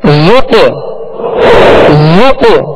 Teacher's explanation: اس میں قلقلہ ہوگا، آواز میں جنبش ہوگی اور آواز لوٹتی ہوئی آئے گی